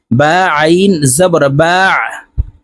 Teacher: আইন হরফকে হলকের মধ্যখান থেকে চাপ দিয়ে উচ্চারণ করব কারণ আইনের মাখরাজ হলকের মধ্যখান থেকে হবে